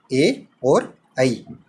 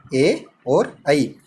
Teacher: ए और ऐ। कौन कौन से? ए और ऐ। इन दोनों वर्णों का उच्चारण स्थान कंठतालु होता है। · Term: कंठतालव्य वर्ण